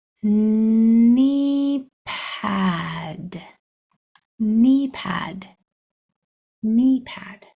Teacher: the K is silent we only hear the N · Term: silent letter